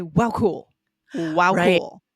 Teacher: there needs to be a little pause there a short wow because you're also wanting to emphasize the wow